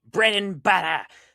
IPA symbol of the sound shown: ɾ